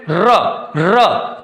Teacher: लुंठित। इसमें जीभ जो है ना लुढ़क जाती है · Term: लुंठित व्यंजन